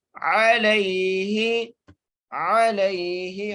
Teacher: عین کو اس کے مخرج سے ادا کریں گے اور لام کو یا سے ملائیں گے